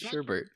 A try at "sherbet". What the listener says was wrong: No, it's not sherbet. There's no R. This is sherbet.